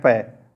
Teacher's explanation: जब आप बोलते हो तो देखना दोनों होंठ आपस में टकराते हैं उसके बाद ही पैकिंग आवाज निकलती है तो दोस्तों पर बोलने